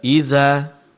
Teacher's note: Di sini kita mendapatkan mad alif, ya, mad alif setelah huruf dzal